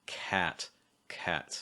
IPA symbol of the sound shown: æ